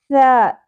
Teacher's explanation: تو تین نقطوں والی جو ثا ہے اس کو نرمی سے ادا کرتے ہیں، سین کی طرح ادا نہیں کرنا، سیٹی نہ ہو شدت نہ ہو